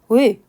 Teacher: 'Ui' 이것 도 마찬가지 입니다 . 첫 글자 를 발음 할 때 는 입 모양 을 만들지만 , 실제 소리 는 'i' 여야 합니다